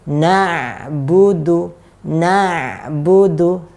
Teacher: ain dia punya aliran dan dia alirannya di tengah-tengah. Bukan huruf yang tertahan. Kalau kita baca na, maka akan jadi tertahan.